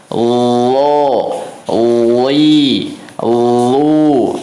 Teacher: suaranya mengalir teman-teman, dan tidak ada nafas yang mengalir untuk huruf lo